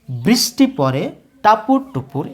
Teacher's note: বৃষ এই দলের উপরে উচ্চারণের জোর বেশি পড়ছে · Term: শ্বাসাঘাত